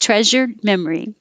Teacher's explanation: think sh and then turn on your voicing you should feel vibration